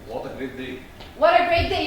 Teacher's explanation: If you do rising intonation with exclamatory sentence, it's going to be a statement intended as a question, which is wrong. So when you are surprised, you are using the falling intonation, not the rising. Otherwise, it would be a question.